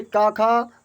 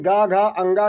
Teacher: जैसे का खा आपका अघोष है, लेकिन गा घा अंगा सघोष है।